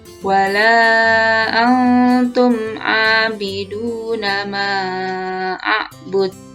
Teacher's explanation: Antum dibaca samar antara bunyi n dan bunyi eng. Ini dinamakan ikhfa.